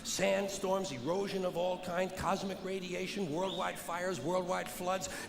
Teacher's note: Carlin delivers an avalanche of events at a constant Rhythm and speed